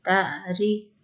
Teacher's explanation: تا عین زبر تا، را زری، تعری. را کو بریک پڑھیں گے زیر کی وجہ